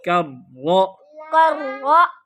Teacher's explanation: کاف باریک پڑھو را موٹا پڑھو